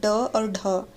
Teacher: जीभ की जो नोक होती है उसके उलटकर मूर्धा को झटकने के साथ उत्पन्न ध्वनि जो है उत्क्षिप्त व्यंजन कहलाती है